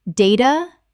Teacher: Data, British, or data, data, American. In British English, the A is always long.